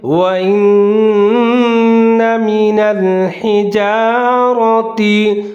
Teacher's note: نون مشدد ہے، ادغام کریں گے غنّے کے ساتھ۔ وَإِنَّ مِنَ الْحِجَارَةِ، ہا کو ظاہر کر کے پڑھنا ہے، را کے اوپر زبر ہے، موٹا کر کے پڑھنا ہے۔